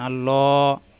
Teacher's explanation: হামজা জবর আমেল বে লামের সাথে লামে তাসদিদ দুইবার। আল পরের লামে খাড়া যাবর একালিপ টান